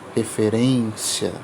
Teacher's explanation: E a gente tem um acento circunflexo, que indica uma sonoridade nasalizada e grave